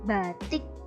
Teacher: vokal tersebut akan diucapkan sedikit lebih tinggi, batik, apabila diikuti dengan konsonan mati di belakangnya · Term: alofon